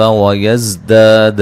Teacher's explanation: زا کو سیٹی سے ادا کریں گے